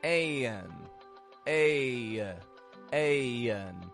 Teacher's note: the American accent makes this subtle transition that sounds like y y between the A and the n